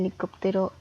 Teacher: está dividida en cinco sílabas y la sílaba tónica es cop